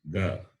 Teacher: It is Alpa Prana because it involves less amount of expulsion of air.